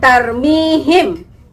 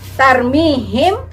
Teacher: Nah, ini kita namakan sebagai ikhfa safawi. Artinya dibacanya samar. Dibacanya samar.